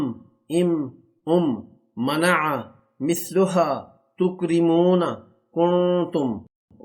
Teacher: मीम जब दोनों होठों के खुश्क हिस्से को मिलाते हैं बाहर वाले हिस्से मिलते तो मीम अदा होता है